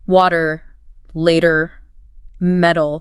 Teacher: The T just softens between vowels. Happens a lot in words like water, later, metal. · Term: flap t